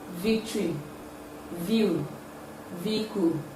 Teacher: air in the oral cavity hence it is a voiced sound it involves the coming together of the upper teeth and the lower lips for its production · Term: labiodental